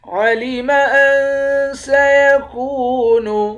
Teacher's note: کاف کو واو کے ساتھ ملا کر واو کو ایک الف کے مقدار کھینچیں گے، واو حروف مدہ ہے۔